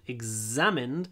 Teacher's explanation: hold the z, examined, it's a nice stretchy sound